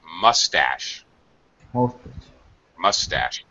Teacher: the stress is on the second syllable, so mustache. Tash goes high.